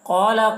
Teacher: قاف کو پر پڑھنا ہے. قاف حروف مستعلیہ میں سے ہے